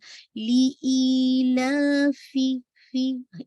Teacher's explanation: फा में हम्स भी है और कसरा को वाज़े कीजिएगा।